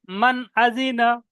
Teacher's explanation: নুন সাকিন, মান বলা মানে নুনের আওয়াজটা পরিষ্কার উচ্চারণ করা হলো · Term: জাহির